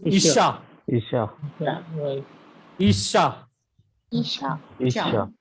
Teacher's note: There is doubling dagesh in shin. Therefore, the pronunciation consonant is doubled.